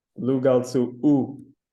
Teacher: And we have lugal tsu, which means your king, which ends in u. So the copula since it's put right after the u, lugal tsu u, the m is lost and the a becomes u